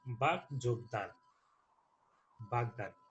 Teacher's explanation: ঘোষ কম্পনজাত দন্তমূলীয় ধ্বনি র, কিংবা ঘোষ অল্পপ্রাণ ওষ্ঠধ্বনি ব থাকলে প্রথম অঘোষ অল্পপ্রাণ ধ্বনি ঘোষ অল্পপ্রাণ রূপে উচ্চারিত হয়।